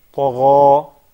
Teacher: Then, when we come to say the word tagha, I understand that the ya is a thin letter, harfu muraqqa, right? But this ya would follow the previous letter in its fatness or thinness. So the ghain is harf, one of the highness or isti'la letters, and it is one of the tafkhim letters, right?